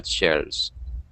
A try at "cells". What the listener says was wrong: And let me help you with your pronunciation of cell. And so it's an S sound. Just like the verb to buy or sell something, the pronunciation is exactly the same.